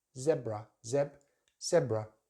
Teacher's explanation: American English, they use that long vowel sound, E, zebra. We use the short one in British English, zebra, zebra, stress on the first syllable.